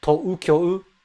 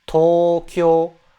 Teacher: You take the O sound and you just extend it a little bit.